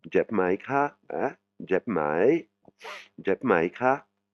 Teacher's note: particule d'interrogation avec une intonation qui monte et qui descend